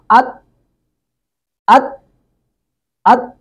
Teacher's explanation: دونوں دانتوں کی جو پشت ہے ان کے ساتھ یہ زبان کی نوک لگتی ہے تو تا نکلتا ہے، تو یہ تا اس کا مخرج ہے۔